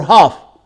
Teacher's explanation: So this is back, open, long, and unrounded, not rounded